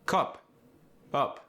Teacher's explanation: The short U sound, as in cup or up, is rounded, more like an oo sound.